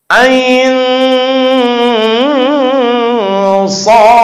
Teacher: Karena di depannya sod agak samar, agak dengung kayak ikhfa. Ain sod. Ada qalqalahnya sod.